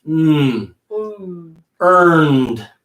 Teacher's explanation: the end is gonna come through the nose okay you're gonna push the air through your nose